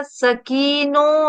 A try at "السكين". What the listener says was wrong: नहीं, सिक्कीन. सिक्कीन, देखो काफ पे भी तशदीद तशदीद के नीचे जेर होता है. सिक्कीनु.